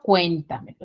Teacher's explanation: Ahora, las sobreesdrújulas son similares, pero ya su tonalidad o su sílaba tónica van a ser aquellas que van a llevar el acento en la anterior a la antepenúltima sílaba